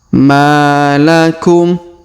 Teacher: huruf Ma kita panjangkan dua harakat karena di depannya terdapat Alif